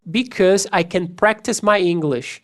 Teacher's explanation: Esse AU vai se transformar como se fosse um O.